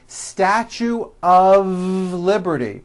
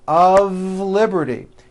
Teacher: even though the word of is spelled with an F we pronounce the word of with a voiced V · notice how I connected the word of with the word Liberty of Liberty you see of is voiced here's another example it's